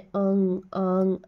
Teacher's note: दूसरा है अनुनासिक स्वर। अनुनासिक स्वर मतलब उच्चारण में हवा मुंह के साथ साथ नाक से भी निकलती है।